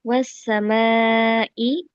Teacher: Wasa itu ada alif lam syamsiah, ada huruf syamsiahnya yaitu sin yang dibaca melebur ke sin.